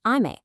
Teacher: It tells you the pitch drops right there. So you say ame, high then low. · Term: pitch accent